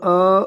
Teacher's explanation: دو حرکات لمبا ادا کریں گے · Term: کھڑا زبر